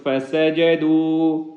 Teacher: سین سا اس کے سیٹی کی آواز بھی نکالیں گے